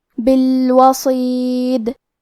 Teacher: آخری میں اگر ہم یہ کلمہ پہ رکے تو دال پہ جزم سے رکیں گے، لہذا ہمیں دال کو قلقلہ سے پڑھنا ہے، بالوصید۔ اور ہم یہ کلمہ کو پوری آیت کے ساتھ ملا کے پڑھے تو کیونکہ اس کے نیچے زیر ہے تو ہمیں زیر کو ظاہر کرنا ہے۔